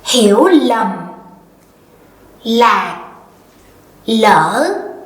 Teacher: But down here in the south, we say hiểu lầm, lạc, lỡ. So we start with an L